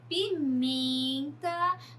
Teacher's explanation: no caso de pimenta, nós temos o men como sílaba tônica